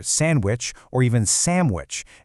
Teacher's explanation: The D is very often silent, especially when people are talking fast.